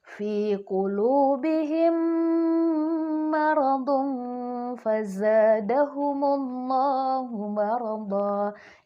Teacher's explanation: menggabungkan kedua huruf mim tadi dengan bacaan gunnah atau dengung sebanyak 2 harokat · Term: idgham mimi